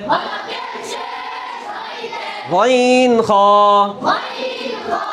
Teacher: 3 নম্বর মাখরাজ হলকের শেষ হইতে গইন খ